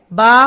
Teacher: با ہونٹوں کی تری سے نکلتی ہے، با ہونٹوں کی تری سے، یعنی جہاں جو حصہ ہمارے ہونٹوں کا تر رہتا ہے اس کو بحری، اس لیے اس کو بحری کہتے ہیں.